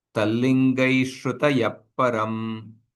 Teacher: Visarga followed by pakara, that visarga is called as a ardha visarga. You pronounce half visarga.